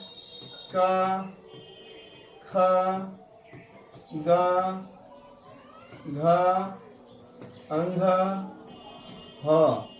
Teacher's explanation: इस प्रकार देखें आ क ख ग घ ह और विसर्ग की उच्चारण स्थान कंठ है। इसीलिए हम इसको कंठ राम कहते हैं।